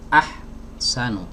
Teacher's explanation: Karena huruf ha memiliki sifat rokhawah ya, harus mengalir gitu ya.